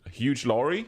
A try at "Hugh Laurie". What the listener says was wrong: Hugh Laurie, not Huge Laurie.